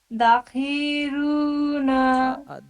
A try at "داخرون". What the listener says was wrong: دال پہ منہ کھولیے، داخی رون.